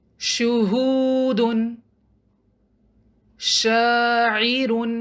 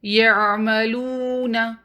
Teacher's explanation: جیم، شین اور یا تینوں کا ایک ہی مخرج ہے۔ زبان کا درمیانی حصہ جب منہ کی چھت کے درمیانی حصے کو ٹچ کرے یا اس کے قریب جائے تو جیم، شین اور یا ادا ہوتے ہیں